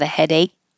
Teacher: You won't hear the K just by itself. Like I have a headache, the K stays there, but you will hear it if there's a vowel after it.